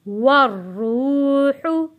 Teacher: वाव जुड़ेगा रॉ के साथ और यहाँ पे रॉ मोटा पड़ा जाएगा। वाव साकिन से पहले पेश है तो यहाँ पे हम एक अलिफ के बराबर यानी एक हरकत के बराबर खींच कर पढ़ेंगे।